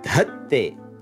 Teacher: For third person singular, we use the weak stem dud, you add te, and you get dhatte, he, she, it puts. Look at that migrating aspirate to the first dha.